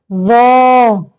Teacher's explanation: زبان کو باہر نکال کے، یعنی اوپر والے سامنے کے دانتوں کے سرے سے لگا کے زبان کو